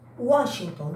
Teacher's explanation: O W representa uma semivogal, pois tem som de U e está apoiado na vogal A na mesma sílaba.